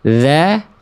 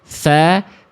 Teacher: Za, tidak mengalir nafas. Kalau dikasih nafas berubah jadi sa